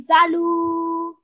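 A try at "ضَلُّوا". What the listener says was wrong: Okay, so you nicely elongated it. But just remember, any letter with the shadeed on top, you put pressure on it. So we're saying, zallu.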